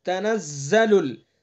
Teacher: تنزل، زا کو سختی سے، زا کا مخرج آپ نے پڑھا زبان کی نوک، ثنا سفلا کا کنارہ، اور کچھ اتصال ثنا علیا سے